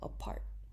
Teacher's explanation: there's aspiration in part, in the P of part, because it is the beginning of a stressed syllable